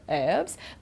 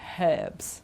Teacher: In American English, they say herbs, okay, don't pronounce the H